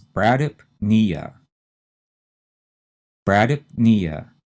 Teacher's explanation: The stress again is on the knee part, which is the third syllable. So we have 2 syllables we have to say pretty fast and run them together and put the stress on knee. So this is bradypnea.